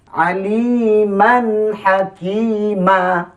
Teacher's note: Artinya mesti dibaca dengan hukum izhar halqi. Yakni diterangkan mimnya dengan nyata jelas tanpa dengung.